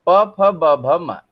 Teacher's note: हमारे होठ का ये जो निचला वाला हिस्सा है, ये करण है। ये क्या करता है, ये प वर्ग के ध्वनियों के उच्चारण में ये जाकर के जो ऊपर वाले होठ को छूता है।